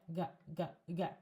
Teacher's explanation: it's a velar sound, as we say in linguistics